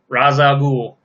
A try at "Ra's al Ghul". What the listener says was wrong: It's not Ross. It's Raish.